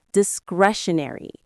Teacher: The stress is on that second syllable.